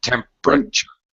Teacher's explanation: syllable same thing happens with temperature notice i don't say temperature i don't pronounce four syllables just three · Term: drop syllable